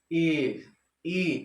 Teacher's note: हमारा मुख जो है मतलब बहुत कम खुलेगा यानी लगभग बंद बंद रहेगा